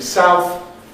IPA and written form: saʊθ (south)